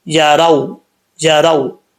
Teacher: اب را کے بعد جو واؤ ہے یہ واؤ ساکن ہے، واؤ ساکن سے پہلے زبر تو واؤ لین ہوتا ہے، واؤ لین سے مراد یعنی واؤ کو لمبا نہیں کریں گے